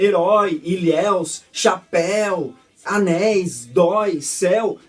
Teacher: essas palavras são oxítonas, ou seja, a última sílaba dela é forte